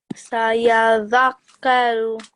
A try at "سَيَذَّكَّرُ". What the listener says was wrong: So just make sure that you're blending the ya with the dhal as well, okay? Sayadhakkaru. Like this.